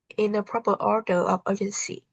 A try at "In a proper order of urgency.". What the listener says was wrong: You did not stretch a single word. In a proper order of urgency.